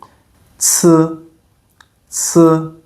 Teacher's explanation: the sound for C, it's more like t S together like in the word boots.